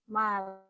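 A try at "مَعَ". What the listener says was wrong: Itu alif, bukan lam ya. Ma'a. A-nya panjang.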